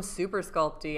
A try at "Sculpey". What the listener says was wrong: Sculpey. Sculpey. There's no T.